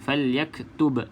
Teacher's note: pastikan yang ba mati ni qalqalah. Ada lantunan.